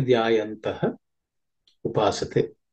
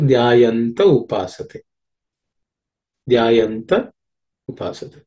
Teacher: Dhyayantaha is the original word, that, but the visarga gets dropped because of sandhi, because it is followed by a vowel, u, the visarga is dropped.